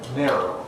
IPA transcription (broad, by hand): ˈneroʊ